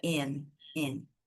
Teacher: não costumam pronunciar a letra T, tá? Então a gente não tem essa pronúncia da letra T, termina no N, que no inglês é aunt, aunt.